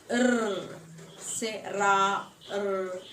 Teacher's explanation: If we say say ra, the tongue tip tapping against the teeth ridge, the sound produced is a trill. It is considered typical of Scottish English trill.